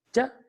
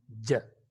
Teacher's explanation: Ch is a voiceless sound, whereas j is a voiced sound.